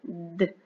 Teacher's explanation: quand tu fais le son de avec ta bouche, la langue vient derrière les dents du devant.